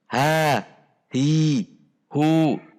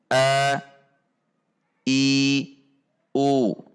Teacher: ketika membunyikan huruf hamzah saat berharokat tidak dengan mendorong udara dari rongga mulut. Contoh cara mendorong udara adalah ha, hi, hu. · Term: al-jahru